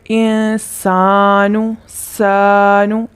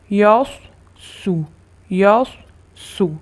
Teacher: اس کو باریک پڑھنا ہے، سانو۔ صاد کو موٹا پڑھنا ہے